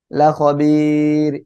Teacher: অক্ফ করলে র সাকিন, তখন আমরা এই জায়গায় তিন আলিফ টেনে পড়বো